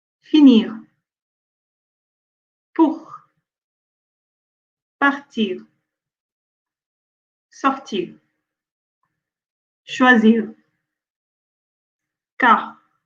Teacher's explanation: le R, c'est très léger, c'est très doux, on ne peut même pas l'entendre des fois. So sometimes we don't even hear it because it's at the end and it's very soft that we can at times miss it. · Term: le R en position finale